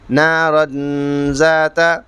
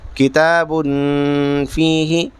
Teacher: اخفا ہوگا، نون کی آواز کو ناک میں چھپا کر پڑھیں گے